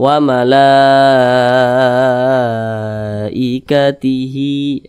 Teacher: Jadi mad wajib muttasil itu panjangnya itu 5 harakat atau kira-kira 5 ketukan.